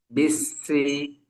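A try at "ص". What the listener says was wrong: Nah, ini baru setengahnya, Pak. Naik lidahnya baru setengahnya. Tapi ada tebalnya, hanya saja tidak maksimal.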